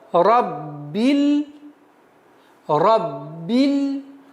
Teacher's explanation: не растягивая, не удлиняя касру, сразу уходим на лям